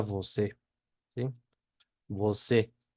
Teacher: Que es una E más abierta que en español